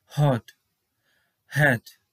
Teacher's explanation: এরপর রয়েছে হ। এবার ইংলিশ ওয়ার্ডের ক্ষেত্রে কিন্তু ওয়ার্ডের শুরুতে এই উচ্চারণের শুরুতে অনেকটা বাতাস বের করে তারপর ওয়ার্ডগুলো উচ্চারণ করা হয়, যেমন হট হ্যাট।